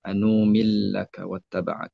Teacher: ada hamzah mufrad serta idgham kabir. Nun bertemu dengan lam.